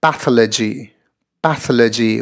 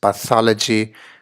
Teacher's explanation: four syllables the emphasis coming here on the second syllable to sound like this pathology in the manner of technology psychology